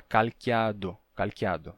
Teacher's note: o t entre vogais de calato calato ele tá entre duas vogais ele vai passar pelo fenômeno de sonorização